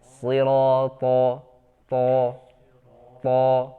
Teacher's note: Selanjutnya huruf to ya. To seperti shad ya, suaranya tertahan di antara lidah dengan langit-langit atas.